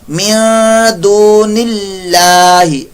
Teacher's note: اللہ کا لام باریک پڑھا جائے گا، اللہ کے لام سے پہلے زیر ہے